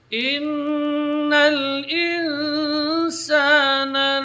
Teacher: Kemudian nun mati ketemu dengan sin, ikhfa. Karena sin huruf tipis, maka ikhfanya di sini dibaca tipis, yaitu tarqiq.